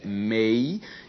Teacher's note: Na palavra ameixa existe um ditongo, a primeira sílaba é a, a segunda é mei, e na sílaba mei existe um ditongo decrescente, temos vogal e semivogal